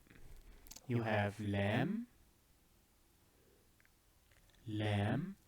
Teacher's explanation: Then we move slightly inwards, where the tip of your tongue touches your palate. However, it is further away from your upper teeth.